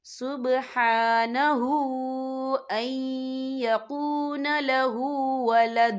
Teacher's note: سبحانہ ہا کے اوپر کھڑی حرکات ہے تو ہم یہاں 2 یا 3 حرکت کے برابر کھینچیں گے